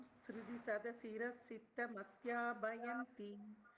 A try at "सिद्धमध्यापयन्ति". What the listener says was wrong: It's not bayanti, payanti. Siddhamadhyapayanti.